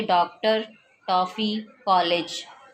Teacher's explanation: आ और ओ के बीच की ध्वनि। अर्धचंद्राकार, इस ध्वनि का प्रयोग अंग्रेजी शब्दों के उच्चारण में किया जाता है, जैसे डॉक्टर, टॉफी, कॉलेज।